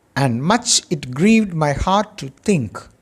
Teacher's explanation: the consonant nasal sound m is repeated twice as the beginning of two words, much, my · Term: alliteration